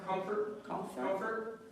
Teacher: even though it's an O, I kind of say it like it's a fur, a hard R sound.